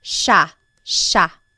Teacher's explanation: It looks like it should be pronounced sa, but it's actually pronounced sha sha. There are some regions in the Philippines that might pronounce it sa but for the most part in the central Luzon Tagalog speaking areas it's pronounced sha sha.